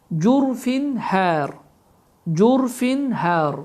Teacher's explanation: Burada da cürfin sözünün sonunda tənvin kəsrəni görürük. Və tənvin kəsrədən sonra hə hərfi gəldiyi üçün və bu hə hərfi də izhar hərfi olduğu üçün tənvin kəsrə açıq aşkar bir şəkildə oxunur